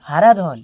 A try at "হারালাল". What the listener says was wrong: হারাধন নয় স্যার, হারালাল, হারালাল। আবার ধন ধরছেন, ধন ছাড়ুন, ধনটা কেটে লাল করুন।